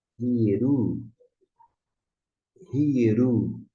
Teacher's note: Tem uma aspiração, é como você colocar um R na frente ou um H em inglês.